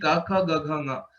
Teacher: All the 5 letters of kavarga, the place of origin is kantha.